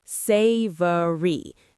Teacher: three syllables, stress on the first